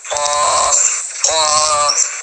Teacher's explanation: حمزہ قاف زبر اب ٹرائی کریں، کوشش کریں تو آپ کی زبان جو ہے نا پیچھے والی جو جڑ ہے جڑ قریب والے نرم تالوں سے لگتی ہے